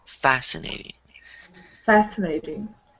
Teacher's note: so the stress on the first syllable